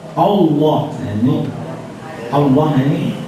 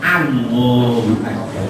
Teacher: hamzah ada yang dibaca oak gak ada harus seharusnya tidak ada karena Hamzah ini tipis harus a semua tidak boleh o walaupun sesudah nya termasuk huruf tafim maka harus hati-hati kalau membaca